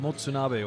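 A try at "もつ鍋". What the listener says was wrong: No, not matsu. No. Motsunabe. Motsunabe.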